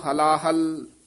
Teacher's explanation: ਹਲਾਹਲ ਪਾਠ ਇਕੱਠਾ ਹੀ ਕਰਨਾ ਹਲਾ ਹਲ ਨਹੀਂ ਕਹਿਣਾ ਪੋਲਾ ਹੀ ਬੋਲਣਾ